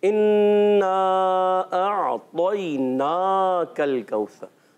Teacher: हमजा आइन क्लियर रखना है, तो मोटा रखना है, नून पर खड़ा जबर है खींच कर अदा करना है, काफ को बारीक रखना है